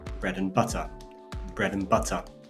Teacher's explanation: We see that both words are stressed, absolutely they're stressed, but not equally. And this is one of the rare instances [music] of a weak stress in English.